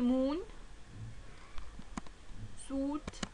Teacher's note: the tongue is in closed position, lips are rounded